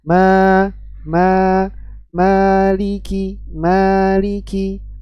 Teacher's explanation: meskipun mim di sini memiliki sifat dengung tapi ketika masuk kepada bacaan panjang itu kita sudah masuk ke huruf mad yang tidak memiliki dengung ma ma Maliki Maliki masuk huruf lam kasrah Li jatuhkan rahang